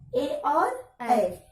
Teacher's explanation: कंठ तालु से बोले जाते हैं